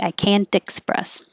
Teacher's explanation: it should be a t but the t changes to a d because it's between the voiced and can and the voice e